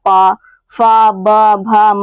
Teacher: इसका उच्चारण स्थान हमारा दोस्तों लिप्स यानी होठ है